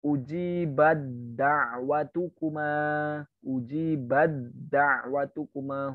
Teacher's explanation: Huruf ta bertemu dengan dal. Ta-nya tidak dianggap, langsung masuk ke dal. Idgham kamil.